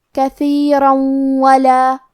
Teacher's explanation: کلمت کثیرہ کے آخر میں را پہ تنوین زبر ہے، پھر حرف الواو ہے تو ہم یہ حکم کو غنہ اور تشدید کے ساتھ ادا کریں گے